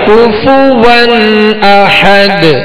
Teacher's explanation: نون ساکن کو زیر دے کر ایک چھوٹا سا نون جو ہے وہ ملا کر اس کو پڑھیں گے